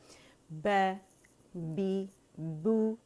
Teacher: دونوں ہونٹوں کے گیلے حصے آپس میں ملیں گے، اور جب ہم بو کہیں گے تو پہلے گیلے سے ملائیں گے پھر رولنگ دیں گے.